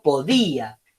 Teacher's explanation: Entonces la I es la que tiene la fuerza.